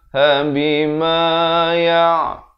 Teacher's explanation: ainnya jelaskan makhraj pertengahan kerongkong